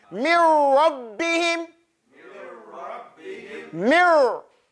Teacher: That means there is no noon sound and there is no ghunna. There's no nasality. So we have to jump straight into this mirror.